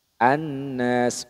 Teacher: sukunnya ya kan Al awalnya kan Al Nas seperti itu kan cuma dileburkan bunyi lamnya ke Nun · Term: Idgham Syamsiah